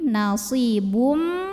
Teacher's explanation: Berikutnya ada hukum idgham bi gunnah karena ada tanwin dhammah yang bertemu dengan huruf mim. Maka tanwin dhammahnya masuk ke mim, nasibum, dan tahan bunyi m-nya, dengungkan.